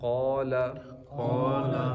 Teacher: قاف حروف مستعلیہ, اس کو موٹا پڑھنا ہے